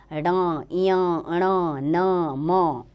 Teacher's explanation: नासिक्य, नासिका यानी कि नाक का इसमें प्रयोग किया जाता है इन वर्णों का उच्चारण करते समय